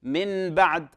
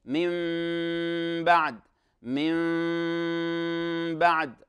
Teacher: الصحيح أنك تقلب هذا النون الساكنة إلى ميم إذا جاء بعدها باء، وتغنها بمقدار حركتين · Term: الإقلاب